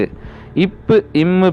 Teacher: பிறப்பது மேல் உதடும் கீழ் உதடும் பொருந்துவதால்